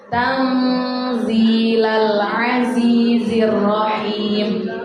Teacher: Di situ tanzila, ada nun mati ketemu huruf za. Hukum bacaannya namanya ikhfa, yang kita baca dengan cara samar-samar, dengung dengan samar-samar.